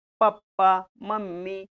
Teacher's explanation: ओष्ठ आहे. होठाला होठ लागतो म्हणून